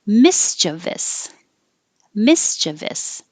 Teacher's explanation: you can say stress on the first syllable mischievous mischievous or stress in the on the second syllable